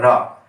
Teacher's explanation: प्रकंपित वर्ण का मतलब है रा, अर्थात रा एक ऐसा वर्ण है यदि आपकी जिह्वा, जीभ उच्चारण करने में रा को हम उच्चारण करते हैं तो हमारी जीभ प्रकंपित करती है, कंपन करती है, तो प्रकंपित वर्ण हो गया।